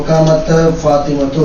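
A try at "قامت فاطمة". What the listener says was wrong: कामता क्यों कहा तुमने? कामत।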